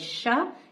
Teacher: تفشی کا مطلب ہے آواز کا منہ میں پھیلنا. یعنی شین کو ادا کرتے وقت ہمارے منہ میں اس کی آواز پھیلتی ہے پھر ہی یہ حرف ادا ہوتا ہے.